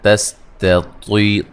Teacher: یہ نون ساکن کا باریک اخفا ہے۔ تستطیع، طا کو موٹا ادا کریں گے، یا مدہ ہے، اس تا کو باریک پڑھنا ہے